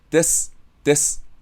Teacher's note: If you round your lips, it sounds like [desʷ], which isn't very beautiful.